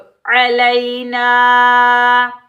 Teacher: अलैना, लाम या ज़बर लई, या लीन को बगैर खींचे पढ़ेंगे।